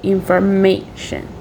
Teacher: my primary stress is on the third syllable it will be indicated by the symbol in the top and